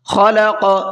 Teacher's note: خا کو پر کر کے پڑھیں گے اور قاف کے اندر قلقلہ کریں گے، اس لیے کہ قاف بھی قلقلہ کے حرفوں میں سے ہے۔